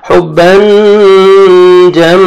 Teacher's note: तनवीन के बाद हरूफे इख्फा में से आप जीम आ रहा है तो इख्फा करेंगे, नोज में साउंड लेके जाएंगे।